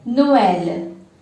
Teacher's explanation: So this is a word where we have 2 vowels together, O and E, are 2 separate vowels with separate sound. So when we add this accent mark, they will have their own identities and will have 2 different syllables here.